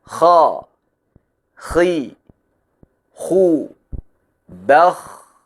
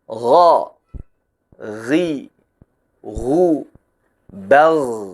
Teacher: Huruf kha diucapkan tanpa menggetarkan pita suara. Adapun huruf ghain diucapkan sambil menggetarkan pita suara. Sama-sama mengalir, sama-sama tebal, tapi berbeda pada aliran udaranya. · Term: huruf hams